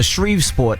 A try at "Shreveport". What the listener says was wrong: Shreve. No, he's just putting an extra S in it. It's just Shreveport.